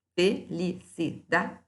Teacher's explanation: de felicidade aqui ó felicidade é uma paroxítona o que é sílaba tônica não é a última é a penúltima